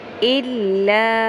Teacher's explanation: حمزہ زیر لام ال، لام زبر الف مد لا. 3 الف کے برابر لمبا کریں